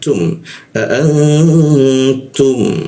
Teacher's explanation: Kita dengungkan, kita tahan dengungnya dua ketukan